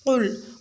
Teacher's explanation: قل میں قاف کو پر یعنی کہ موٹا پڑھا جائے گا، قاف ہیوی لیٹر ہے، لام کو باریک پڑھا جائے گا۔